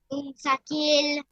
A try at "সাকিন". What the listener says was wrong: সাকিল না বলেন সাকিন, সাকিন সাকিন 100 বার বলেন তো সাকিন।